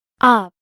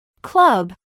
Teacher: la vocal U será pronunciada con el sonido de la U corta, el mismo que se asemeja al chua, pero con una pronunciación un poquito más prolongada